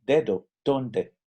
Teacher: hacemos en el español mexicano y la letra d es muy parecida a la letra t en inglés nuestra lengua toca el paladar